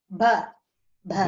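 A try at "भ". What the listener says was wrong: It is bha. Bha. It is Mahaprana. Bha. Like in the word Mahabharatam. Bharatam. Bhumi. Bharati. That bha, Mahaprana.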